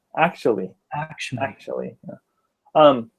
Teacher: Actually, the rhythm would be like dun da da.